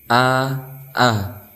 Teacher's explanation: Hamzah itu makhraj itu di pangkal tenggorokan Adapun cara pengucapannya seperti huruf a coba Perhatikan gambar berikut ini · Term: huruf hamzah